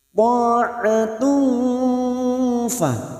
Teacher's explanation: bunyi tak marbuta yang berharokat duma tanwin bertemu fa kita samarkan bunyi duma tanwin. Ta'atu fa namanya ikhfa hakiki, dan ini juga yang disebut dengan ikhfa ausat.